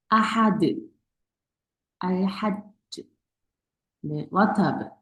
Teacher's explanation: 그래서 깔깔라로 끝나는 경우는 가장 강해요